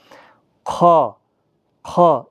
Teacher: ابتدائی حلق سے ادا ہوتا ہے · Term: حروف مستعلیہ